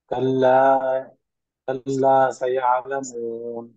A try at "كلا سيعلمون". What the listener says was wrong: దీంట్లో కల్లా లాకు దీర్ఘం తీస్తున్నారు కదా, మద్దల్ అస్లీ. ఇక్కడ ఇక్కడ యాలమూన్లో చివరిలో మదారి సుకున్ వచ్చింది.